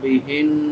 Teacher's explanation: بڑی ہا ہے حلق کے آخری حصے سے جس کو اقصی حلق کہتے ہیں